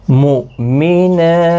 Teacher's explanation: حمزہ ساکن کو جھٹکے کے ساتھ ادا کیا جائے گا